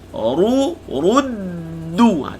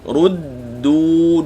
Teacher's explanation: Bila sebut ru muncung. Bila berpindah kepada dal yang bertasydid, mula-mula jumpa dal sukun dulu. Ruddu muncul balik.